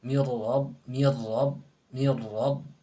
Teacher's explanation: Seperti contoh miladun, mil asalnya min ladun, tapi di situ nun sukun bertemu lam, jadi miladun tidak ada dengung ya.